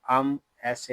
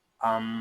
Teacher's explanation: یہاں میم شدد ہے، اس کو غننے کے ساتھ ادا کریں گے